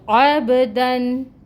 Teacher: دن تنوین آ رہی ہے دال کے اوپر، اور یہاں پر اظہار ہوگا، مطلب ظاہر کر کے تنوین کو پڑھا جائے گا، نون کی آواز کو۔ عبدن، کیونکہ آگے حروف حلقی میں سے حمزہ آ رہا ہے، ٹھیک ہے، تنوین کے بعد حمزہ آ رہا ہے جو حروف حلقی میں سے ہے، اس وجہ سے ہم نون کی آواز کو ظاہر کر کے پڑھیں گے۔